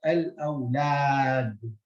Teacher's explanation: Again, lam and alif, but in this case, the lam has got a fatha, and on the alif we don't have a hamza. So the alif here makes the fatha a double vowel. I mean, the alif here is what it does to the word, it is a double vowel for the a.